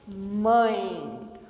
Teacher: O som sobe e sai pela cavidade nasal. Muito. Ele não passa apenas pela boca. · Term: ditongo nasal